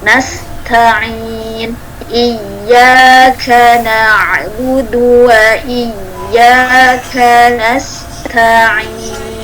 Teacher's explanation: Hati-hati ketika ta ini bertemu dengan sin, biasanya hamesnya ta ini kalah. Karena sin itu kuat, dia punya yang desis, punya desir gitu, punya stofir ya, jadi dia akhirnya kuat sekali.